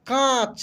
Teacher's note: इसका उच्चारण नाक से होता है बस कांच ठीक है ना इसको अनुनासिक बोलते हैं हम लोग